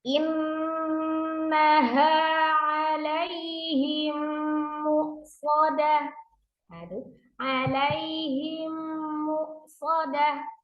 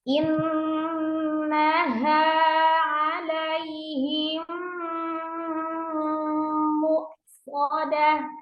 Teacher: Jadi harus sempurna, paling sempurna untuk gunnahnya. Tidak boleh dipendekkan durasi gunnahnya.